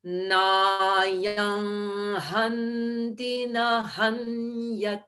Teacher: I made that nasal sound at the end of nayam rather than at the lips, at the throat, because that's where hanti begins.